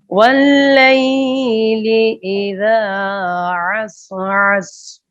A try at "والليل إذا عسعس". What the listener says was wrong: عسین کو ہلائیں نہیں. واللیل اذا عسعس.